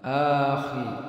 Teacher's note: huruf kha dibaca tebal. Ini suara tempatnya pada tenggorokan bagian atas